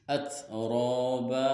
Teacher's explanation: huruf tak sukun dibaca hamas dan ro-nya dibaca tafhim tebal sebab harokat fathah. Dan ada juga hukum mad tabi'i huruf alif di fathah.